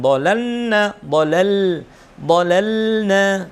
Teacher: Jangan sampai terlalu cepat sukunnya huruf lam sehingga terkesan idgham pada huruf nun.